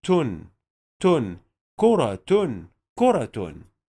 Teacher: Here we have تاء مربوطة. We will pronounce the تاء مربوطة with ضمة تو plus نون والسكون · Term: تنوين بالضمة